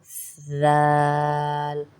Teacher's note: اب زال کو ادا کرنے کے لیے آپ کی زبان کی ٹپ دانتوں سے تھوڑی سی باہر آئے گی